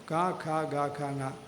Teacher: നാക്കിന്റെ കടഭാഗം മുകളിൽ ഒന്ന് മുട്ടിച്ചു കഴിഞ്ഞാൽ അത് ക എന്നാവും അല്ലേ അല്ലേ അത് കുറച്ച് ബലത്തിലായാലും ഖ എന്നാവും പതുക്കെ ആണെങ്കിൽ ഖ എന്നാവും